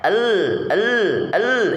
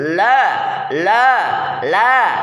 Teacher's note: hentikan nafas jahr ya la la la gitu ya kemudian dan upayakan suara antara tertahan dan terlepas tawasud